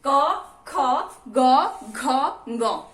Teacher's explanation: क वर्ग का उच्चारण स्थान क्या है, कंठ है